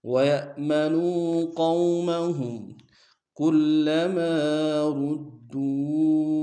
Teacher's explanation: کلما میں لام کے اوپر شد زور دیں گے، میم کے سالف مدہ ایک انداز میں کھینچیں گے، را کو موڑا ادا کرتے ہوئے دال کے سامنے آئیں گے، شد زور دیں گے، دال کو واو کے سامنے آئیں گے، واو مدہ اور مد منفصل ہے، کم سے کم دو الف انداز میں کھینچیں گے.